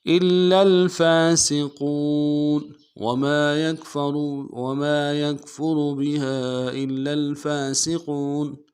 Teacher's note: وما يكفر بها إلا الفاسقون الا میں حمزہ کو لام کے ساتھ ملانا ہے، لام کے اوپر تشدید زور دیں گے، اور لام کو لام کے ساتھ ملانا ہے. فا کے اوپر کھڑا زبر ایک الف دال میں کھینچیں گے. قوف کو موٹا کرتے واو کے ساتھ ملانا ہے، واو مدہ ایک الف دال میں کھینچیں گے.